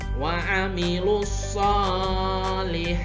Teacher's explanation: Nah, ini ya, alif lam lalu bertemu dengan huruf shod, maka dibaca langsung dengan huruf shod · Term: alif lam samsiah